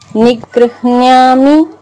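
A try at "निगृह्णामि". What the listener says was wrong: నిగృహ్ణామి. అది యావత్ లేదు. నిగృహ్ణామి లేదమ్మా, యావత్తు లేదు అక్కడ. న్యా కాదు, హాకు నావత్తు. నిగృహ్ణామి నిగృహ్ణామి నిగృహ్ణామి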